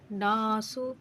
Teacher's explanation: نون مشدد کا غنہ ہوگا، اس کو غنہ کریں گے ایک الف کے برابر رک کر اور کھینچ کر بھی پڑھیں گے